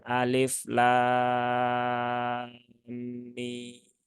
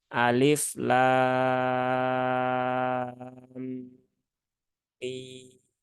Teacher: Nah, jadi bacanya bukan alif lam mim, nah, enggak ya, tapi antara lam dengan mim ada idghamnya dulu, tunaikan idghamnya, ditahan dulu 3 harokat, setelah itu baru ke mim